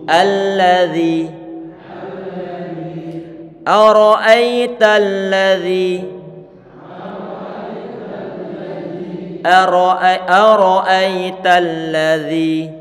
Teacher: Kita panjangkan dua harokat. Karena kenapa? Ada huruf ya yang datang setelah huruf zal. Ya sukun sebelumnya kasroh. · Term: mat tabi'i